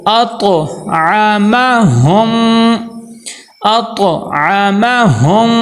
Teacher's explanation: طا کو موٹا بھی کرنا ہے اور قلقلہ بھی کرنا ہے.